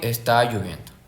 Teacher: Bien, tenemos la entonación en oraciones enunciativas también, que quiere decir que principalmente son las que simplemente informan, afirman o niegan eh afirmativas o negativas. Con un solo grupo fónico tenemos que es la entonación sube al principio y se mantiene se mantiene y baja al final. Tonema descendente. · Al principio sube, luego se mantiene normal y luego baja.